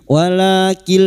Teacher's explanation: nun sukun bertemu lam idgham bila gunnah, hanya masuk tanpa mendengung, masuk pada huruf lam